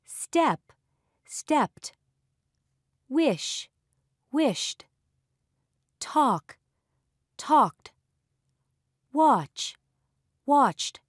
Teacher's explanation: In words that end with a voiceless consonant, it is pronounced as t.